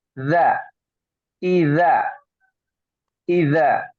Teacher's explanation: yang ketiga huruf dza ya dza itu digigit ya d ya bukan Za tapi dza digigit sedikit dza ya lidahnya lidah kita ini diikit digigit sedikit dza idza